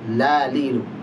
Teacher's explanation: Jadi ujung tepi lidah sampai ke ujung lidah menempel di langit-langit atas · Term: huruf lam